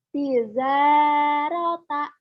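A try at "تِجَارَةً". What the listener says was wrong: Jimnya keras. Tijarota. Tijarata.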